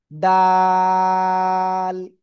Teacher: ওই একই জায়গা থেকে, জিহ্বার আগা এই উপরের দুই দাঁতের গোড়ায় লাগাবেন, লাগিয়ে 3 আলিফটা নিয়ে উচ্চারণ করবেন।